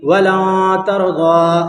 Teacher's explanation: نون کی آواز کو ناک میں چھپا کر پڑھنا چاہیے، جیسے اردو میں پنکھا کے نون کو پڑھتے ہیں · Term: اکفا